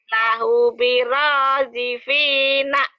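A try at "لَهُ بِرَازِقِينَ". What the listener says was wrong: Birojikin, bukan birojifin. Lahu biraziqina.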